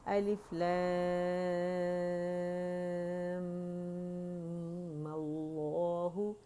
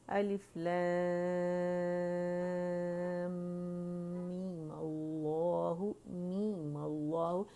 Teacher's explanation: می کا غنہ ادا کیا, ٹھیک ہے, اور غنہ اکمل گریڈ کا تھا · میم کو ہم نے 6 کی بجائے 2 کاؤنٹ کھینچیں گے, مد اصلی بنائیں گے, اس پر فتحہ لگا کے اسم جلالہ سے جوڑ دیں گے